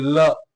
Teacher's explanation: आपकी जीभ जो है ऊपर तालू में टच करती है और दोनों साइड से जो वायु है वो प्राण वायु निशत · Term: पार्श्विक